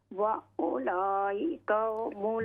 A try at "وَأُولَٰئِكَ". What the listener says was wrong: मत को और भी लंबा कीजिए। वउलाइक